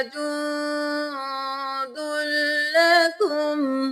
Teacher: यहाँ पे अख्फा करेंगे, नाक में आवाज को छुपाएंगे। हुआ जुंदुल लकुम, जुंदुल लकुम नहीं करना, दाल को लाम के साथ मिलाएं।